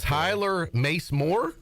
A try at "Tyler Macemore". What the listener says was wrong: Not Mace Less. Macemore.